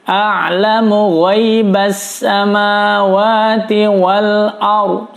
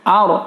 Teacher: Sebelum ra barisnya fathah, dibaca tebal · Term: ra tafkhim